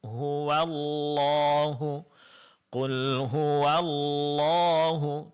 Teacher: Pengucapan huruf wau sebelum lafaz Allah di sini masih agak ee tebal maka ditipiskan